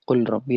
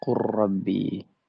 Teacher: Jadi tadinya dibaca qul rabbi jadi qurbi. Meleburkan dengan sempurna huruf lam kepada huruf ro.